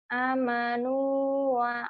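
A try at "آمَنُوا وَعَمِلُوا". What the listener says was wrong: A-nya panjang. A-nya panjang.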